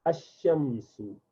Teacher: for shams you say ash-shams, you do not say al-shams. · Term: shamsi letter